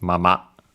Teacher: usually it's mama low high with the accent on the last one last syllable